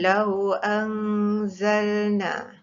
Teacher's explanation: Lau anzalna mesti didengungkan, nun mati berjumpa dengan zai, hukumnya ikhfa hakiki.